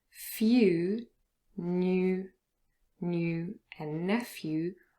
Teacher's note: few new new and nephew all have a little ye appearing between the first consonant and then the oh sound there's a little yeah appearing if